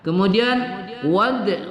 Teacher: dal berbaris sukun kita baca qalqalah sughra atau qalqalah kecil